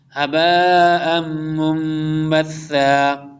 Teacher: تنوین کے بعد میم مشدد آ رہا، اس لیے ادغام یرملون ہوگا